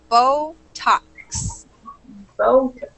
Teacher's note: a really long o sound there for the first syllable B and then a short o for the second so Botox